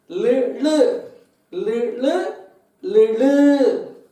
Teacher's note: லுன்னு சொல்லும் பொழுது நாக்கை மடக்கி ழகாரத்துக்கு, அதாவது தமிழில் வந்து ழான்னு சொல்லுவோம் இல்லையா, அது மாதிரி மடக்கி சொல்லணும். ஆனால் இந்த லக்ஷ்மிக்கு வர்ற லா மாதிரி இருக்கணும்.